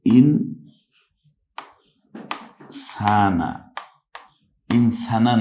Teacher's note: অর্থাৎ [music] ইন সানা ইনসানা না বলে আমরা বলছি ইন সানা একটু নাকের বাঁশিতে নিয়ে ইনসানা এই এটা হলো ইকফা